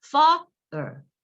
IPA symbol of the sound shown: ɘ